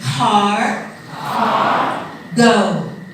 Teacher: the k sound in English, when it comes at the beginning of a word, is highly aspirated. Means a big puff of air.